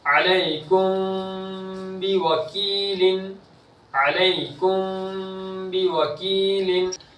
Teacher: لم یلد علیکم بوکیل، دیکھو یا ساکن سے پہلے زبر ہے تو یا لین، میم ساکن کے بعد با ہے تو اخفاء شفوی ہوگا، یا ساکن سے پہلے زیر تو یا مدہ ہوگا، یا مدہ ہے تو اس کو ایک الف کے برابر کھینچیں گے بھی